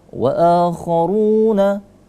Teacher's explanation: Wa akharuna, a dan ru di situ dibaca panjang ya. Sesama 2 harokat. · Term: mad badal